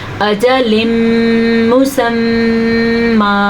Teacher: اگر آپ کو سمجھنا ہے تو 4 سیکنڈ تک آپ نے اس کو لمبا کر کے رکھنا ہے. اجل مسمى, ادغام بالغنہ اور یہاں پہ میم کا غنہ دونوں کو آپ نے ادا کرنا ہے. ہاں یہاں پہ اہم چیز سیکھنے کی یہ ہے, اب ہم نے یہاں پہ وقف کیا ہے تو یاد رکھیں جب 2 زبر وقف کی حالت میں آ جائیں تو وہ ایک کھڑی زبر یا ایک الف مدہ بن جاتا ہے.